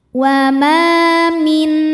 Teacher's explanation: nun sukun menghadapi huruf halqi halqi itu arti ya tenggorokan maka nun sukun ini kita bunyikan dengan jelas jadi kalau bunyi nun sukun n maka ketika bertemu Hamzah tetap bunyinya n dan tidak ditahan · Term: izhar halqi